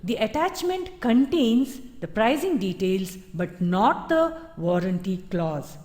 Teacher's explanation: the emphasis is on not the warranty Clause but the pricing details which is within the attachment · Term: intonation brings contrast